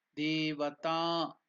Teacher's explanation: ta is also elongated, it is dirgha